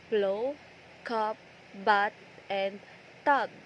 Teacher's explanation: The air is completely blocked by meeting both upper and lower lips. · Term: stop consonant